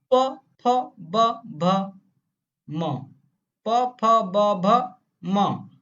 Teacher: ओंठों से सब बोल दोगे, जीभ का कोई काम ही नहीं इसमें · पा वर्ग इसमें कोई रोल ही नहीं जीभ का, ओंठ से बोल दोगे, ओंठ से।